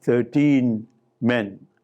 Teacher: In that case, there is no stress clash because you have paused in between, or you have somehow lengthened the time span in transiting from 13 to men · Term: silent stress